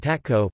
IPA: ˈtatkɔ